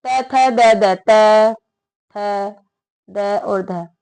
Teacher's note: त वर्ग पूरा दंत से बोला जाएगा